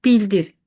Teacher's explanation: Bildir sözündə vurğu birə düşəndə olur zaman zərfi bildirir.